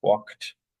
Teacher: right instead of a du because this the voiceless C walked voicelessness of the C affects the pronunciation of the D so it's pronounced like T